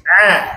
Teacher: suara tu kena alir daripada tengah halkum tu ke mulut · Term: ain